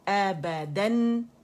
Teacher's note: क्यों कि हमने स्ट्रेच कर दिया, मद बना दिया. मद नहीं है, जस्ट 1 काउंट के लिए आपका जबड़ा पूरे ऊपर की जानिब खुलेगा